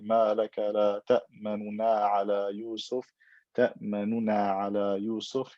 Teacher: You don't pronounce the dhamma clearly. You read it quickly with ikhtilas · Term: rawm